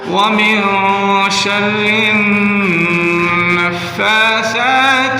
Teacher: را کو نون مشدد کے ساتھ جب ملائیں گے تو نون کے اوپر شد ہونے کی وجہ سے غنہ کریں گے، یعنی ایک الف کی مقدار کھینچیں گے نون مشدد کو